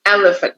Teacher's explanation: For example, the word elephant, we say elephant, so we stress the first syllable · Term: word stresses